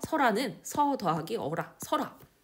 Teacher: 두 모음이 이어질 때 하나의 모음이 탈락하는 모음 탈락